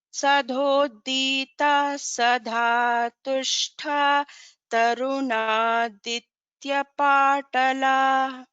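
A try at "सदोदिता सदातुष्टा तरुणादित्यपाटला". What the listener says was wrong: In the second line, everything is in, all the letters are in Alpa Prana. There is no Mahaprana in the second line. Sadodita Sadatushta Tarunaditya Patala.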